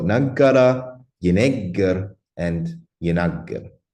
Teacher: But the D stem has a problem because if I distinguish in the G stem the past from the future or the perfect from the imperfect through gemination of the second radical, I cannot do that in the D stem because the second radical is always geminate. So it's just a different vowel.